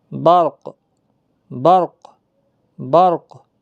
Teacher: کاف پر قلقلہ کے ساتھ وقف ہوگا. کاف کو ساکن کر دیا 2 پیش کے بعد.